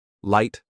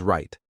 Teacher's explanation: The L sound is made with the tongue touching the roof of your mouth. The R sound comes from curling your tongue back.